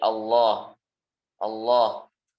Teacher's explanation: Benar pengucapannya dan seterusnya, makhorijnya, sifatnya dan seterusnya. Jadi lafzul jalalah ini pertama yang harus diperhatikan, lamnya ini panjang.